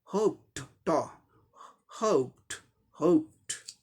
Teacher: प क्या हुआ, वॉइसलेस है, इसलिए ईडी का उच्चारण ट होगा